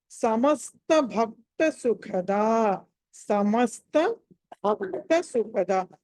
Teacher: భక్త దగ్గర భ మహాప్రాణము, అలాగే సుఖద దగ్గర హ అన్నది మహాప్రాణం ఒత్తి పలకాలి